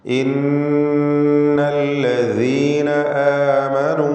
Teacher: ഇന്നല്ലദീന ആമനൂ, നൂൻ മുശദ്ദദയെ മണിക്കണം, 2 ഹറക്കത്തിൻ്റെ അളവിൽ ഗുന്ന നൽകണം